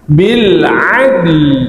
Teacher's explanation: waqaf pada adl, huruf dal sukunkan, qalqalahkan dan datangkan lam di akhir.